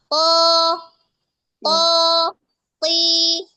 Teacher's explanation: Permukaan lidah itu arahkan tempelkan ke langit-langit. Jadi persempitlah dia sehingga dia ee keluarnya itu menggema. Terus arahkan dia ke atas suaranya. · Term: yang tebal